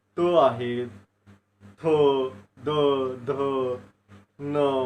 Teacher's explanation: जिभेचं जे काही टोक आहे, तर समोरील दाताच्या पाठीमागच्या बाजूला स्पर्श होऊन हे वर्ण निर्माण होतात, म्हणून यांना दंत्यवर्ण असं म्हणलेलं आहे. · आपल्या दाताच्या पाठीमागचा जो काही भाग आहे, त्या ठिकाणी आपला जिभेचा शेंडा जो आहे तो स्पर्श होतो